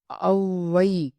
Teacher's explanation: இடையிலயும் இறுதி லயும் வரும் ஆனா அவகார குறுக்கம் மொழிக்கு முதலில் மட்டுமே வரும். சொல்லுக்கு முதலில் மட்டுமே வரும் அவகார குறுக்கம் ஒன்றரை மாத்திரை அளவினதாய் குறைந்து ஒளிக்கும் இது அவகார குறுக்கம் எனப்படும். ஓகேவா எடுத்துக்காட்டு பாருங்க அவ்வை அவ்வுன்னு சொல்லுவோம் அதனால